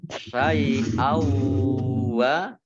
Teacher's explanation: Syai'au wa fathah tanwin bertemu dengan huruf wawu, bacaan idgham bi gunnah. Idgham masuk bi dengan gunnah mendengung, yaitu mendengung wawu. Ditandai dengan wawunya dibaca ada tasdidnya.